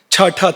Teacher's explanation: ಉಸಿರನ್ನು ಬಲವಾಗಿ ನೂಕಿ ಹೇಳಬೇಕು. ಮಹಾಪ್ರಾಣ ಅಂತ ಯಾಕೆ ಕರೀತಾರೆ ಅಂದರೆ ಉಸಿರನ್ನು ಬಲವಾಗಿ ನೂಕಬೇಕಾಗತ್ತೆ. ಮಾತ್ರ ಅಲ್ಲ, ಇಲ್ಲಿ ಸ್ನಾಯುಗಳ ಸಂಕೋಚ ಏರ್ಪಡುತ್ತೆ.